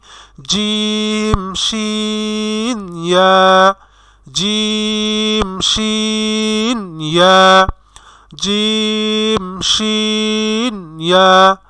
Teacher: জিব্বার মধ্যখান তার বরাবর উপরে তালুর সঙ্গে লাগাইয়া 3টি হরফ উচ্চারিত হয়।